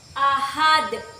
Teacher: Karena ada dal yang diwakaf pada akhir kata. Cara membacanya itu dipantulkan keras seperti ini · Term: qalqalah kubro